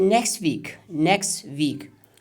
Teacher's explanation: in this connected speech there will be no ta sound. We won't pronounce it next week because it takes a lot of effort.